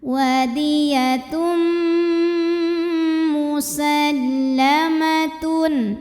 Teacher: jadi bunyinya M sambil didengungkan, tahan. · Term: idgham bil gunnah